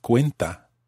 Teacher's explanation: it has to maintain the stress on the cue syllable